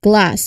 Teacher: So the G sound is also made at the back of the throat but with vocal cord vibration because it's voiced and that's the characteristic of a voiced sound. From that voiced G, your tongue moves quickly to the L position like glass. So pay attention to the clear immediate connection between these two voiced sounds. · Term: G cluster